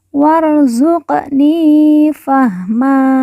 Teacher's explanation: Q sukun atau Q mati kita baca pantul karena merupakan huruf Qalqalah · wa langsung masuk huruf ro Alif tidak dibaca